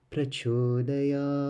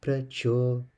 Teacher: So we have pra, middle sound, cho, going low, da, middle, ya, double A, so it becomes ya, and the wave is there. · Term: Dirgha Swarita